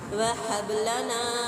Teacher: नून पे अलिफ मद्दा 102 हरकत खींच के पढ़ना है। वह हबलना, हबा पे कलकला करेंगे, कलकला कुबरा होगा। ना पे अलिफ मद्दा 102 हरकत है, इसको खींच के पढ़ेंगे।